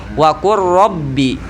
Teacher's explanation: di sini lam bertemu ro, tapi tidak ada sakta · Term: idgham